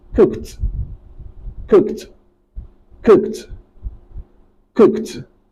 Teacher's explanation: when ed is coming after a voiceless consonant, it is not pronounced as d, it is pronounced as t